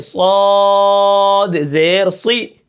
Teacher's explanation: یہاں پر صاد ہے تو صاد کو ہم موٹا کر کے پڑھیں گے